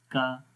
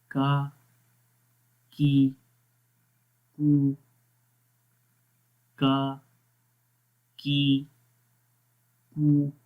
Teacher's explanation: زبان کی جڑ اوپر تالو کے سخت حصے میں لگ رہی ہے اور باریک پڑھنا ہے